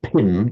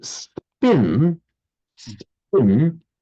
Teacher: But if you say spin spin there's not such a puff puff of breath there